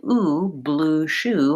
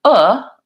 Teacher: I still have lip rounding but my jaw is a little bit more open